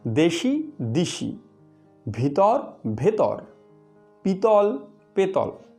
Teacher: লক্ষ্য করো, দেশি সমান সমান দ যোগ এ যোগ তালব্যস্য যোগ হ্রস্বই। পরবর্তী স্বরধ্বনি হ্রস্বইয়ের প্রভাবে পূর্ববর্তী স্বরধ্বনি এ হয়ে গেল হ্রস্বই, ফলে দেশি হলো দিশি। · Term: পরাগত স্বরসঙ্গতি